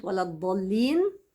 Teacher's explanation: ده بيوجد ما يسمى المد اللازم ولا الضالين فكلمه ولا الضالين مطلوب مني ترقيق الواو واللام ما افخمهاش